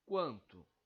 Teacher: Nós sabemos que quando temos N ou M no meio da palavra, isso configura um dígrafo vocálico. Então, esse A e esse N pronunciam-se como um som só